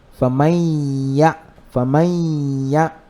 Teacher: So instead of saying faman ya'mal, we say faman ya. We merge this noon into the ya. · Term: al-idghamu